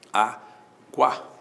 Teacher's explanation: o U é semivogal, o A é vogal, o ditongo é crescente